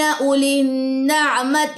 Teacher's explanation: یہ واو سائلنٹ ہے, ٹھیک ہے. اولن واو نہیں پڑھنا, واو مد نہیں کرنا